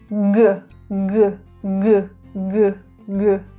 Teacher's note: Did you feel a vibration there on your throat? Yes, it's a voiced sound.